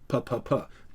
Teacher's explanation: p is articulated on the lips, and so it's called a labial plosive